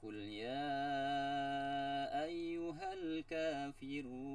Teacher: kafirun itu mad arid li sukun dibaca 2 sampai 4 harokat panjangnya